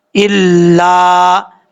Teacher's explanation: لام کے آگے الف ہے، ایک الف کی مقدار لمبا کریں گے